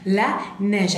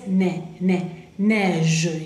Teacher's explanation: Ahí tenemos el sonido E. Entonces, acuérdense, es E abierta.